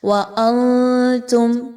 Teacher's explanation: وَأَنْتُمْ، نون ساکن کے بعد تا کا حرف آ گیا، اخفا کے قاعدوں کو فالو کیجئے، زبان کو تھوڑا سا اوپر کی طرف اٹھائیے، نون کو کلیئر نہیں پڑھنا اور غنہ بھی کرنا ہے · نون کی آواز کو آپ نے ناک میں لے کے جانا ہے